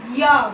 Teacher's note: य इसे बोलते हैं हम तालु से य बोलिए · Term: अर्ध स्वर